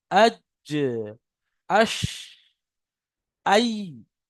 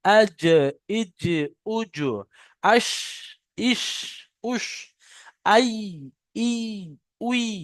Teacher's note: জিভের মাঝখান এবং তার বারাবার উপরের তালুর সাথে লাগিয়ে উচ্চারিত হয় জিম, শিন, ইয়া। জিভের মাঝখানটা উপরের তালুর সাথে যদি আমরা লাগাই, তাহলে যে ওই যে খালা জায়গাটা আছে ওইখানে ঠিক লাগে।